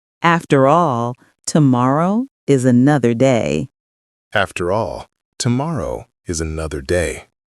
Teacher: Smooth link between after and all, then gentle brightness on tomorrow.